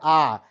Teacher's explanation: जिस स्वरों के उच्चारण में मुख द्वार पूरा खुल जाए तो वो होता है विवृत या ओपन या खुला